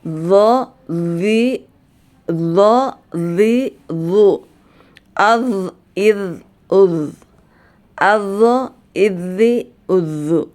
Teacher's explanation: Nah jadi tidak Tidak ada pantulan kemudian rasakan punggung lidah kita bergetar